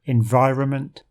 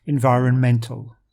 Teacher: Something else to highlight for the word environmental is the shifting stress when we change from the noun to the adjective. The noun has the stress on the second syllable, environment, while the adjective is on the next to last, environmental.